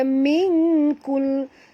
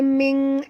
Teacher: Nun mati bertemu kaf, sorokkan bunyi nun ke dalam kaf disertai dengung, ikhfa hakiki.